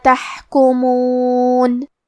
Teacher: کلمت تحکمون میں ہا ساکن ہے تو ہم ہا کو ظاہر کریں گے اور ہا کی ادائیگی حلق کے درمیان والے حصے سے ہے